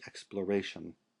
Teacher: you would also always accent the a of exploration in English because in Latin it's long so you would say in Latin explor and in English exploration